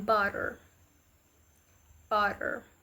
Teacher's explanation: A quiet sound in which the tongue briefly touches the roof of the mouth. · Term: Tap